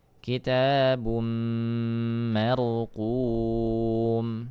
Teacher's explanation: dhammatain bertemu dengan huruf mim ya idgham bi gunnah